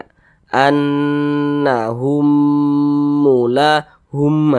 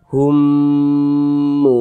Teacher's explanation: huruf mim sukun yang berjumpa dengan huruf mim hukumnya idgham mimi maka kita dengungkan jadi humnya itu kita tahan kita panjangkan saja · Jadi humnya itu kita tahan, kita panjangkan sejenak.